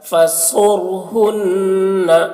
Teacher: را ساکنہ سے پہلے پیش ہے تو را کو بھی پر پڑھنا ہے ، صاد کو بھی پر پڑھنا ہے کیونکہ صاد حروف مستعلیہ